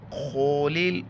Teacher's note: قیلد خولل، خولل خا کو موٹا کر کے پڑھنا ہے، لام کو لام کے ساتھ ملائیں گے